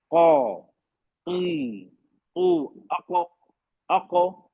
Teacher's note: जबान और हलक के ऊपर के हिस्से में जोर डालकर आवाज निकाली जाती है। हलक के ऊपर मतलब टॉप ऑफ द थ्रोट, वहां को जोर वहां लगाते हैं हम तालु पे जोर नहीं लगा रहे हैं, जोर गले पे लग रहा है, मतलब ऊपर ही, गले के ऊपर हिस्से पे लग रहा है। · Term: काफ